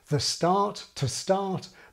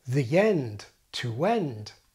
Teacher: Now I have the more traditional pattern where these are ðə and tə before consonants but ðij and tʉw before vowels. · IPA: ðəstart, təstart, but ðijend, tʉwend